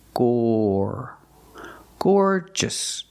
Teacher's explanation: the first syllable is the long or sound like floor and more · The stress is on the first syllable.